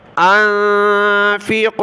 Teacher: یہاں نون پر ناک میں آواز پیدا ہوگی